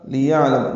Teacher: لِيَعْلَمَ لام کو جلدی پڑھنا ہے، یا کو عین سے ملانا ہے، عین ساکن پہ اظہار ہے، لام میم جلدی پڑھیں گے.